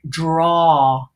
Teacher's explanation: the Americans would pronounce the sound more awe like a more open sound